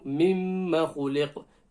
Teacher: Kha. Throat letter. Top of the throat. And it's a full mouth letter as well.